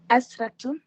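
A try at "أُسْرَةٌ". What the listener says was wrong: Tout est bon, sauf que la voyelle de la première lettre n'est pas.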